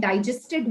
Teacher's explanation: But when I say, the food which we had did not get digested well, then the syllable stress is on E in digest